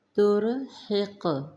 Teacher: قوف پر جزم، نمایاں پڑھیں گے، قلقلہ کریں گے